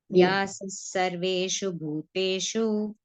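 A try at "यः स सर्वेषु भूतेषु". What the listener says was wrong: yaha. It was not ya. Yaha sa sarveshu bhuteshu yaha. explicitly you should not do aha. Little bit. Yaha sa sarveshu bhuteshu, because it is coming in between. When it is aha comes in between, don't explicitly sound it. Very gently.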